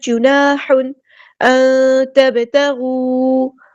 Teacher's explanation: نون ساکن کے بعد یہاں پہ ہم چھپا دیں گے، اخفا ہو رہا ہے 2 کاؤنٹس رکیں گے اخفا کرتے ہوئے.